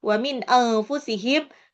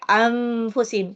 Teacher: Cenderungnya jadi kayak mim ya. Karena nun sukunnya itu hampir mau lompat ke makhrajnya fa yang di bibir itu. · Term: ikfa